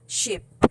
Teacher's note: these are alveolopalatal, meaning these are just made behind the alveolar ridge.